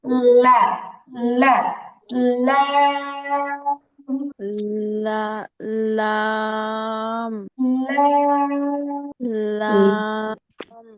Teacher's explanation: জিহ্বার আগার কেবল মাথাটাকে উপরের দুই দাঁতের গোড়া বা মাড়িতে লাগাতে হবে।